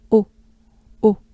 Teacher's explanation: So first we start with the typical French O. O. O. It's a closed, right? It's closed up. A closed O.